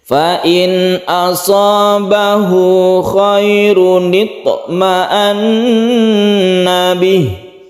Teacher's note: di sini ada ta yang qalqalah sughra, kita pantulkan toknya. Kemudian setelah itu ada tasydid nun. Tasydid nun kita gunnahkan.